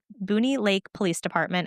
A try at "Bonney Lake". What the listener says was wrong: You called it Booney, not Bonnie? Bonnie's-